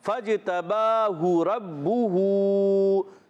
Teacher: پہلے والا ہا کی پیش ہم نے نہیں کھینچی، مگر دوسرے والے ہا کی پیش کو ہم نے کھینچی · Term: الٹا پیش